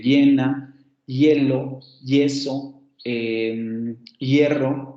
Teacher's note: Bueno, como esa es el núcleo y la vocal aparece antes, la vocal cerrada anterior aparece antes de esa E, entonces esa vocal se convierte en una semiconsonante